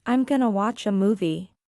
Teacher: going to becomes gonna, and want to becomes wanna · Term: connected speech